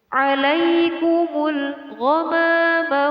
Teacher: Alif lam di sini dinamakan alif lam qamariyah karena ditandai dengan lam sukun. Dibaca izhar atau jelas. · Terdapat nun mati bertemu dengan huruf za, dinamakan hukum bacaan ikhfa. Ikhfa cara membacanya adalah dengan samar.